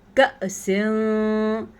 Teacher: یہاں پہ ہم نے نون کو کسی حد تک چھپا کے پڑھنا ہے، اسے اخفا کہتے ہیں